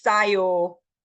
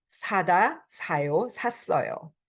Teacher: 싸다 is not a verb, it's to be cheap, right? So make sure when you're reading, pronouncing the words, you don't say 싸요 for 사요, to buy. It's soft S.